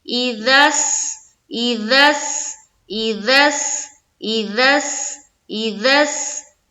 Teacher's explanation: سین کو ادا کرتے ہوئے جو آواز نکلتی ہے وہ سیٹی کی طرح ہوتی ہے، سیٹی کی طرح۔